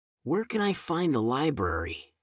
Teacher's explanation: her voice lilting upward at the end, just as it should in a question.